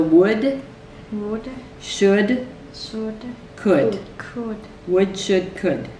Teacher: The L is really silent in these.